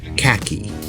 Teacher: because most accents of the English language don't have that ha sound it has become a hard k sound